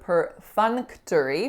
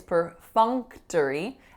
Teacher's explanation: we want the N to be produced back here because that's where our tongue is gonna be for the K so we're assimilating those two sounds we're bringing them closer together